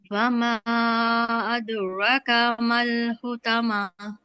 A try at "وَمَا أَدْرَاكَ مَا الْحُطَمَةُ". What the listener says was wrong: ایک چھوٹی سی مسٹیک ہو گئی. آپ نے کہا وما، آپ نے یہاں پر پورے پورے بنا دیے 4 to 5 کاؤنٹ، اور یہ ادرا نہیں تھا، ادرا تھا. ادرا کا. ٹھیک ہے، وہ الف صغیرہ دیتے ہیں نا، وہ 2 کاؤنٹ اس کو کرنے.